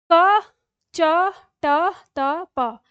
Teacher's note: यह कंठ से हो रहा है। यह तालु से हो रहा है। यह मूर्धा से हो रहा है। यह दंत से हो रहा है। और यह ओष्ठ से हो रहा है। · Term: उच्चारण स्थान